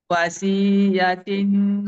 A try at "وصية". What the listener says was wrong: Dekat ya. Ada sabdu tu. Wasiyatin. Wasiyatin.